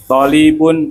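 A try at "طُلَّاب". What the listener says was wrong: Panjang pendeknya. Panjang. Kalau gini berarti panjang. Iya, panjang.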